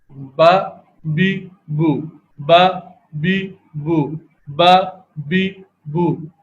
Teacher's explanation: یہ حرف ہونٹوں کے تری والے حصے کے ملنے سے ادا ہوتا ہے. مثال کے طور پر تو یہ دونوں ہونٹ ہیں، ان دونوں ہونٹ کا جو نسبتاً اندرونی حصہ ہے تو اس کے ملنے سے یہ حرف با کی ادائیگی ہو رہی ہے.